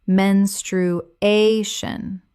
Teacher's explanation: The stress falls on the third syllable.